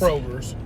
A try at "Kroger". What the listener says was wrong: And ain't no S on Kroger. It's Kroger. Damn, Kroger. Kroger's. Ain't no S on Kroger.